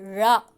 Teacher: ழ ழன்னும் போது உள்ள நல்லா மடங்கணும் நாக்கு வந்து உள்ள நல்லா மடங்கணும் நாவின் நுனி மேல்நோக்கி வளைந்து வருவதால் ழகரம் தோன்றும் ழகரம் போது அந்த நாக்கு நல்லா மடிஞ்சு அன்னத்தை வந்து தொட்டு அப்படி வரணும்